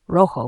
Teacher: R is strongly trilled, rolled at the beginning of a word